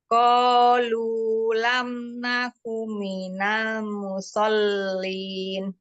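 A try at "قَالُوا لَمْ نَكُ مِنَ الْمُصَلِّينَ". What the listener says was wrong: Ya, panjangin lagi linnya. Qalu lam naku minal musallin. Bukan qalu, tidak ada tasdid lamnya. Qalu.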